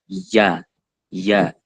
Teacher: makhroj yang keluar di tengah lidah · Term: wasat lisan